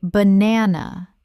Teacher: The first and last syllables are weak.